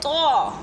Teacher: زبان کی جڑ جب سامنے والے دو دانتوں کی جڑ سے لگتی ہے تو ادا ہوتا ہے طا